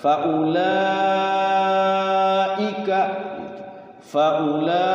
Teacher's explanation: Kalau ini satu kalimat, faulaika, di dalam kalimat itunya hamzahnya. Namanya mad wajib muttasil, panjangnya 5 harakat atau 2,5 alif.